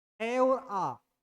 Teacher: दो स्वर ए और आ जिनका उच्चारण कंठ से होता है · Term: कंठे ध्वनियां